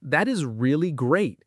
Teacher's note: If you stress really and let your voice rise a little, it sounds genuine and warm. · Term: intonation